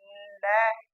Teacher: यदि आप देखो कि मैं ल का उच्चारण करूं ल, तो जो हवा है जीभ के दोनों ओर से निकलती है, इसलिए ये पार्श्विक कहलाता है।